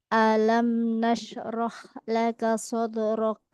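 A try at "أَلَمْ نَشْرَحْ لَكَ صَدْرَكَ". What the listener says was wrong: Asyaknya kurang kurang rokhawah.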